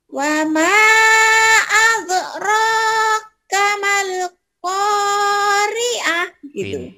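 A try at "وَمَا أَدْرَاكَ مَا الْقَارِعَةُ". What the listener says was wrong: Pinter ya, tinggal ainnya nanti belajar sama Jijah ya, ainnya belum keluar.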